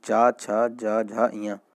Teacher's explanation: स्पर्श संघर्षी व्यंजन ये आप याद रखिए, चा छा जा झा इया, ठीक है। चा वर्ग जो होता है हमारा स्पर्श संघर्षी व्यंजन होता है